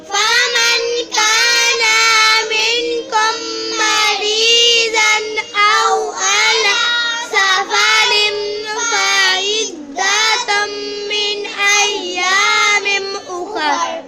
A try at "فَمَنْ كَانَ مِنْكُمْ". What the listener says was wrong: فمن كان ना को लंबा नहीं करना.